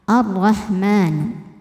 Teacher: Alif lamnya dihukumi alif lam syamsiyah karena setelah alif lam ada huruf syamsiyah yaitu huruf ro. Maka cara bacanya lam tidak dibaca atau dileburkan.